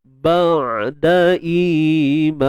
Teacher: huruf ain tawassut. Jangan tahan suara, jangan lepas suara, di tengah-tengah.